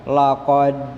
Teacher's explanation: Dal akhirnya adalah sukun. Maka huruf dal mendapat harokat sukun, itu disebut dengan qalqalah. Jadi ada pantulan laqad. Kemudian takwim khalaqna qaf, di situ juga termasuk huruf qalqalah.